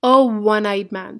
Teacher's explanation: It begins with O, but the sound is again of W. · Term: sound of W